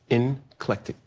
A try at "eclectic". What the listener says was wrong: there's no N in it. No, no, no.